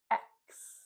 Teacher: The X sound is actually made of two sounds, the K and the S.